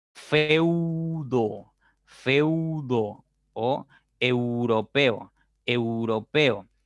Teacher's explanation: Tus labios se cierran un poco más cuando pronuncias la U. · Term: diptongos decrecientes